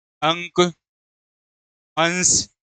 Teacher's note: अनुस्वार के उच्चारण में नाक से अधिक सांस निकलती है और मुख से कम निकलती है।